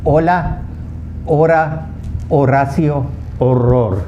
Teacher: The alphabet H is the only alphabet in the Spanish language that's completely silent. It has no sound at all.